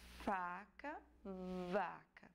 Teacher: Quando você produz o som, os lábios inferiores e os dentes superiores entram em contato para que o som possa ser produzido